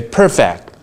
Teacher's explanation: if you say perfect that's a first syllable stress